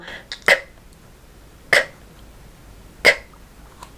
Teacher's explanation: the back of the tongue makes the closure on the roof of your mouth at the back for k